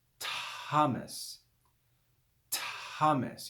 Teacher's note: it's like the sound of a t with aspiration with breath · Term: theta